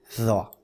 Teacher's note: জিব্বার আগা উপরের দুই দাঁতের আগার সাথে লাগিয়ে মোটা আওয়াজে উচ্চারণ হবে এটা